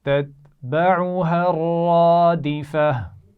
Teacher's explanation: را موٹی پڑھی جائے گی اور آخر میں گولتا ہے تو اس کو ہم ہا ساکن سے بدل کر پڑھیں گے